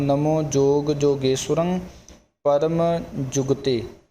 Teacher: ਜਦੋਂ ਜੁਗਤੇ ਪਾਠ ਬੋਲਣਾ, ਵਿਚਾਲੇ ਜਿਹੜਾ ਗੱਗਾ ਅੱਖਰ ਛਪਿਆ ਇਸ ਨੂੰ ਸ਼ੁੱਧ ਬੋਲਣਾ, ਜੁਗਤੇ ਨਹੀਂ ਕਹਿਣਾ। ਜੇ ਜੁਗਤੇ ਕਹਾਂਗੇ ਅੱਧਾ ਗੱਗਾ ਬੋਲਿਆ ਜਾਏਗਾ, ਅੱਧਾ ਕੱਕਾ, ਇਸ ਲਈ ਪੂਰਾ ਗੱਗਾ ਅੱਖਰ ਬੋਲਣਾ ਧਿਆਨ ਦੇ ਨਾਲ।